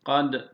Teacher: Dala vurgu yaptık kalkale. Ra'yı da kalın telaffuz ettik.